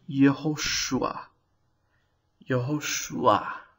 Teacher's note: There's a little patach that sneaks in between the shorek and the ayin. This patach that sneaks in is called a furtive patach.